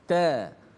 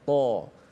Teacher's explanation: Ta itu walaupun sama makhraj dengan ta, tapi sifatnya beza. Ta nipis, ta. Ta itu tebal, ta. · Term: tebal dan nipis